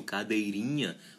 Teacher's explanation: observe que não é mais o dei, o tônico, é o ri. Já entra aqui na parte do sufixo, o cadeirinha.